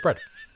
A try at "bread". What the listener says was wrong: Just the way you said bread there. You just bread. We don't have time for extra fucking vowels.